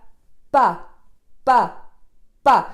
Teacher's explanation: je mets beaucoup de tension dans ma consonne et je la laisse exploser à l'intérieur sans qu'il y ait d'air qui soit propulsé à travers, sans pousser mon air à travers.